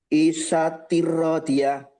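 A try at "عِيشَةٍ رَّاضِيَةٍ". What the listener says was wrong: I-nya panjang. Aisyatir radiyah. Ro-nya panjang. Radiyah.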